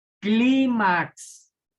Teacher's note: acento en la penúltima sílaba por lo tanto es grave